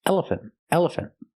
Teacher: the last syllable is not stressed